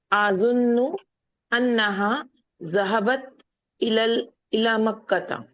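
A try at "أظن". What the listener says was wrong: अजुन्नो एक ही वर्ड है, आ और जुन्नो नहीं है, अजुन्नो एक ही वर्ड है।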